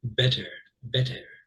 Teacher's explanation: if you are English, you're probably going to say that much more distinct T's in the middle of a word.